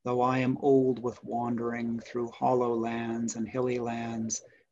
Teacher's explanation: you can hear that that last syllable doesn't really want to take a stress. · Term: rhythmical anticlimax